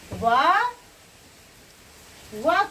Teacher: व का उच्चारण स्थान क्या होगा? दंत्योष्ठ होगा अर्थात दांत और ओष्ठ होगा।